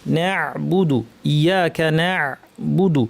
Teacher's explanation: এরপরের আয়াতে আমাদের ইয়াকা না'বুদু, এখানে আইনটা খেয়াল করতে হবে। শ্বাসনালীর পর্দাটাকে আমাদের এবার ভালো করে চেপে দিয়ে বাতাস বন্ধ করে দিয়ে আইন উচ্চারণ করতে হবে।